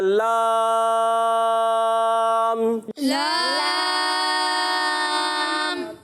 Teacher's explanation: زبان کا کنارہ جو ہوتا ہے اوپر دانتوں کی جڑ کے اوپر تالو کی حصے سے ادا ہوتا ہے ، یعنی جو دانت ختم ہوتے ہیں نا، دانت کی جڑ